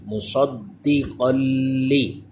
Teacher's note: دال یہ حروف قلقلہ ہے، اس میں جماؤں کے ساتھ قلقلہ کریں · قاف پہ دو زبر کی تنوین، اس کے بعد لام حروف یرملون ہے لیکن لام میں بھی غنہ نہیں کرنا